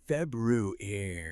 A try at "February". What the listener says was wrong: Make sure that first R is audible. Febru. If your goal is clear, confident, standard English, yes, aim for February.